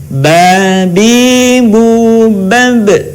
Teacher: Ketika huruf Ba dalam posisi mati, suaranya terdengar mantul.